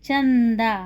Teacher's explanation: में क्या है ये जो डॉट है इसको कहते हैं अनुस्वार अनुस्वार थोड़ा सा इसमें न का उच्चारण आता है